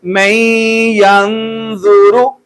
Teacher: میں نے یہ را کو پر کر کے پڑھا ہے، وہ پہلے سبقوں میں ہم نے پڑھا تھا کہ اگر را کے اوپر زبر اور پیش آ جائے تو اسے پر کر کے پڑھنا ہے، موٹا کر کے پڑھنا ہے، اور اگر زیر آ جائے تو اسے باریک کر کے پڑھنا ہے۔